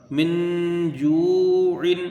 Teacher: واو مدہ ہے، اس کو کھینچ کے پڑھا جائے گا، 1 الف کی مقدار ، عین کے نیچے 2 زیر کی تنوین ہے، من جوع،